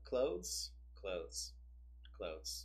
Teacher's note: you can sort of skip the th sound and get away with it so clothes clothes clothes so it's more like closing closing the